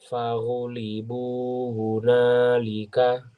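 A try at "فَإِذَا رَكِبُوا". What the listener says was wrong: Panjang pendek tidak ada salah. Hurufnya nanti dicek zal itu ujung lidahnya keluar. Faiza rakibu gitu ya.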